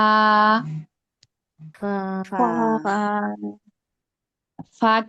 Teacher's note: আর কি যে বাতাস বের হবে যখন নাকি আমরা উচ্চারণ করব, নিচের ঠোঁটের পেট সামনের উপরের দুই দাঁতের আগার সঙ্গে লাগে আর কি ফা উচ্চারণ করতে। উপরের দুই দাঁতের সঙ্গে নিচের ঠোঁটের পেট লাগবে।